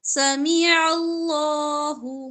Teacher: عین وسط حلق سے ادا ہوگا لام موٹا پڑا جائے گا اس سے پہلے زبر ہے سمیع